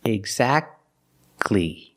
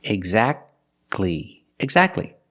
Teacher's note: You don't say exactly, exactly. Don't pronounce the T. Exactly. You go from the k sound to the l sound. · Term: the T is silent